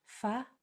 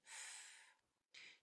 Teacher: F is made with your top teeth going over your bottom lip, and you blow. Only air. And it's not fa, it's just f.